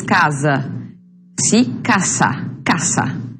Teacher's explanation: A letra S, casa, casa. Letra S não tem som de Z, como no português, casa